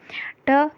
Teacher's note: जब आप ट बोलोगे तो आपकी जिह्वा जो है वो मुड़ेगी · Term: मूर्धन्य